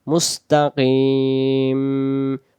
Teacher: ঠোঁট মিলে যাবে, মুস্তাকিন, কিন হবে না, শেষে মিম অক্ষর, ম হবে